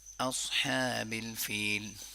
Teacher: اوس نہیں کریں گے، او نہیں کریں گے، اس صاد کو بولڈلی پڑھیں گے لیکن آ کو بولڈلی نہیں پڑھیں گے